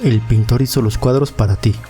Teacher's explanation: esto pasa porque el artículo él no tiene acento y se pega a la siguiente palabra que si lo tiene que es pintor lo mismo pasa con · el artículo el y la palabra pintor suenan como si fuera una sola palabra